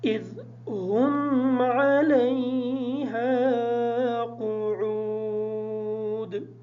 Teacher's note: یہ قاعدہ ہے کہ الف ساکن ہو اور الف کا ما قبل جو حرف ہے اس پر زبر ہو تو الف مدہ ہوتا ہے. اس وجہ سے ہم ہا کو تھوڑا سا لمبا کر کے پڑھیں گے تاکہ الف ادا ہو جائے